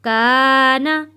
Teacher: الف سے پہلے زبر ہے، کا حروف مدہ ہے، اس لیے ہم نے یہاں اس کو کھینچ کر پڑھا ہے۔